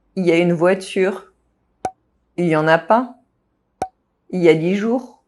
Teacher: When il is used in il y a, il is very often completely dropped.